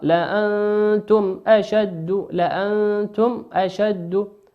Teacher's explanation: والميم في كلمة لأنتم ميم ساكن أتى بعدها حرف الهمزة، والهمزة من حروف الإظهار